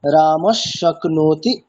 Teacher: যেমন রামহ শক্নতি, এখানে বিসর্গটি কি হবে, তাহলে পরে যেহেতু তালব্য স আছে তাহলে বিসর্গটি তালব্য স এর রূপ ধারণ করবে, ফলে রাম শক্নতি এরকম উচ্চারণটা হবে।